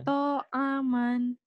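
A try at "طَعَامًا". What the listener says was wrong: To'aman. Panjang. Hati-hati.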